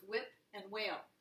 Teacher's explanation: with WH, I don't hear the H at all. It's a silent companion.